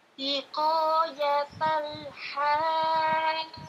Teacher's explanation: Nah, Ini perhatikan haj, fathah, ini fathah bertemu dengan alif. Ini disebut dengan mad. Bertemu dengan huruf yang bertasdid, maka panjangnya 6 harokat.